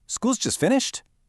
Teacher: if you're super surprised, you'll probably use a fall-rise tone.